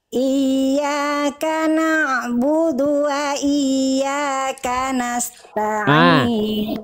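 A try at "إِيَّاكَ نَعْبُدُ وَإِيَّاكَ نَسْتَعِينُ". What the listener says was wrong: Nasta'in, jangan jeda. Bunda tadi begini, nasta'in antara ta, itu harus ngalir terus.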